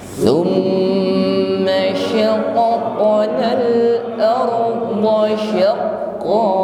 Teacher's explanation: ra-nya bersukun, maka kita getarkan tetapi bunyinya tebal, bukan sekedar ringan, tapi bergetar namun harus tebal